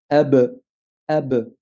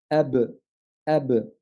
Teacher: Le le le le la définition du point d'articulation, c'est en collant les lèvres l'une contre l'autre. Bah pour la qalqala, il suffira tout simplement de décoller les lèvres.